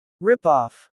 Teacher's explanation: Rip-off. Stress usually falls on rip.